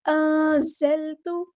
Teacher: زا کی آواز میں سختی لے کر آنی ہے، سٹی لے کر آنی ہے، باریک پڑھیں گے، لائٹ لیٹر ہے۔